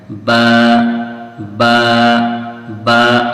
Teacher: यानी जो दोनों होठ हैं उसके भी जो भीगे हुए हिस्से हैं वहां से ये ब निकलता है। [संगीत] ब अब बोलने के टाइम जो है आप अपने मुंह पे गौर करें तो आपको समझ में आ जाएगा कि ये वहीं से निकल रहा है। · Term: होठों का तरी वाला हिस्सा